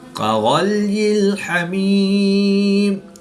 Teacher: غین حروف مستعلیہ میں سے ہے تو اس کو پر یعنی موٹا پڑھیں گے، کاف کو باریک پڑھیں گے کیونکہ یہ حروف مستفلہ میں سے ہے۔